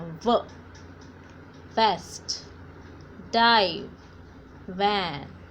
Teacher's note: ऊपर के दांत को नीचे वाले लिप्स पे रखना है आपको और उसके बाद आपको एयर बाहर निकालनी है.